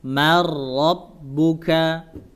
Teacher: maka dia langsung diidghamkan huruf ro